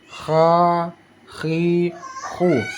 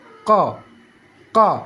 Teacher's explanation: kalau huruf Kha dia seperti ada getaran Kha khi khu dan suaranya meng mengalir